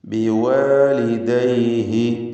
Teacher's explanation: ബിവാലിദൈഹി ഹ ഉദ്ദമീറിന് അല്പം പോലും ദീർഘം വരുന്നില്ല, കാരണം തൊട്ടുമുമ്പിൽ സുക്കൂൻ ഉള്ളതുകൊണ്ട്.